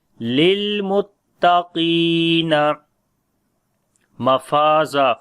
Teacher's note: Qaf we read in heavy sound and we long as well. There is ya madda.